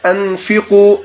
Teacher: ان ہے اور اس کے بعد فا ہے، حروف حلقی میں سے نہیں ہے تو آپ یہاں پر غنہ کر سکتے ہیں